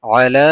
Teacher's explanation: আলা খারা জবর এক আলিফ লম্বা হবে